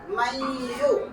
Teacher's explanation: نون کو یا سے ملا دیں گے، ہو جائے گا میو۔ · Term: ادغام